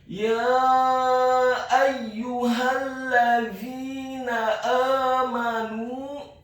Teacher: huruf alif atau hamzahnya dibaca tipis, fathah 1 harokat. Huruf ya yang kedua dibaca tipis, ditasydidkan, ditekankan, dhammah 1 harokat.